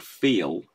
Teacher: the L sound that you're hearing there is just a dark L. It isn't a syllable onto itself. So feel, because you couldn't go feel, you know, feel, you know, it just doesn't happen.